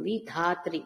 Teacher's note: విధాత్రి ఒత్తుధా పలకాలండి మహాప్రాణాధికారం.